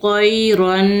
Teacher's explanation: را 2 زبر رن، طیرن، 2 زبر کی تنوین کو 2 حرکت غنّے کے ساتھ پڑھیں گے